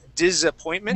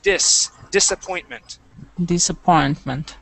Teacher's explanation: that s uh will not be pronounced like a like a z okay you would said disappointment yeah okay it would be an S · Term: S sound